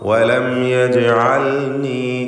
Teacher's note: യജ് ജീമിൻ്റെ സുക്കൂൻ ഖൽഖല സൂറ നൽകി ശബ്ദം ഹറക്കത്ത് പോലെ വ്യക്തമാക്കണം.